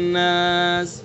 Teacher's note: नास के अंदर चूँकि नून मुशद्दद है तो इसके लिए इसके अंदर गुन्ना करेंगे, यानी एक अलिफ के बराबर नाक में आवाज़ को रोकेंगे।